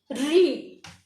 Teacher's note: री बोलने में भी उतना ही मुंह खुल रहा है जैसे ई में खुलता है, बहुत सकरा सा।